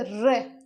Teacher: हमारी जीभ 2-3 बार ऐसे प्रकंपित, लुंठित हो रही है